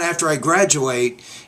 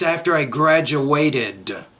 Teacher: don't forget that additional syllable at the end there to mark the past tense. And that, so it's not after I graduate, it's after I graduated.